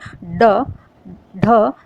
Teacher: उत्क्षिप्त का अर्थ है कि जिन वर्णों का उच्चारण करते समय जब हमारी जबान होती है, जीभ होती है, वो झटके से नीचे गिरती है तो उसे उत्क्षिप्त व्यंजन कहते हैं। · जैसे आप बोल के देखेंगे ड, ढ, तो हमारी जो जबान है वो ऊपर मूर्धा को टच करके और एकदम से नीचे गिरती है, तो इस तरीके से इनको उत्क्षिप्त या गौण व्यंजन भी कहते हैं।